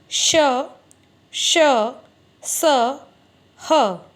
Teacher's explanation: ऊष्म व्यंजन यानी जब इन व्यंजनों का आप उच्चारण करते हैं तो इनके बोलने में कुछ गर्मी पैदा होती है। जैसे श, एक रगड़ सी लगती है और क्या होता है? उससे गर्म हवा निकलती है